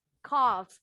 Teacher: Karena bunyi huruf F, pita suara kita nggak bergetar. Voiceless, semua voiceless.